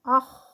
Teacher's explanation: رخاوہ ہے، رخوت ہے، اس میں آواز بھی جاری ہے، آخ، آواز بھی اس میں غین کی طرح جاری رہے گی.